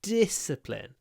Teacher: the D at the beginning so we do this discipline where we don't release the D immediately